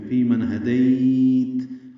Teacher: من میں نون ساکن پڑھا جائے گا، آگے ہا رہا ہے، اظہار ہوگا نون پہ · فی من ہدیت، ہم رک گئے ہیں، یا لین ہے، اس کو نرمی سے پڑھتے ہوئے لمبا کر دیا ہے، لین وقفی یا لین عارض سکون بن گئی ہے.